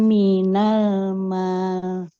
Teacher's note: Mimnya fathah ketemu alif harus panjang. dipanjangkan.